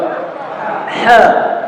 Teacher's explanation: Huruf ha sifatnya hamas, berarti suaranya samar, tidak ada tekanan dan ada banyak aliran nafas yang mengalir